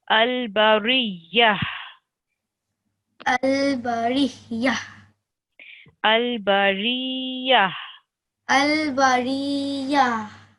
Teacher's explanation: Almost. So it's a ha sakina, which means it's just a h sound, like a breathing sound. Okay, so you would say al-bariyah.